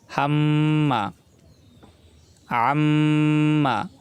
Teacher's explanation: নাকের ভিতর নিয়ে গুনগুন শব্দ করতে হবে। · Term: গুণনা